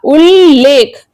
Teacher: जब त के बाद ल आता है तो त आधे ल में बदल जाता है।